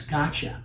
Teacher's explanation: When I say got you, got you can become gota which becomes gotcha. So when you have t and ya together, it often becomes a cha sound